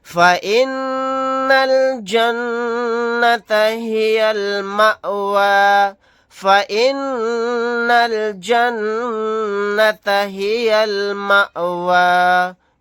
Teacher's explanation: نون کے اوپر تشدید ہے، یہاں پر بھی نون کے اوپر تشدید ہے، دونوں جگہ غنہ کر کے پڑھیں گے ، حمزہ ساکنہ پر جھٹکا لگا کر پڑھیں گے، آیت کرنے